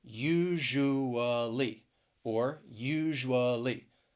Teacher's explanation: is that s-u it's like those sounds they blend together and you have that j sound it is a voiced sound you hear that vibration in your vocal cords